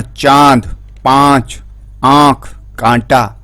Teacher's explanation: इसका उच्चारण नाक और गले दोनों से होता है। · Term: अनुनासिक